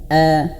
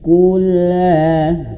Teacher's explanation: hamzahnya harus jelas ya. A jangan sampai hamzah ini terseret-seret.